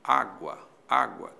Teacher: Há uma subidinha do U para o A. Esse U é semivogal, o A é vogal. Aí nós temos um ditongo. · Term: Ditongo crescente